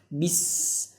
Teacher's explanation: Sifatnya terlihat yaitu anginnya mengalir, suaranya mengalir. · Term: huruf sin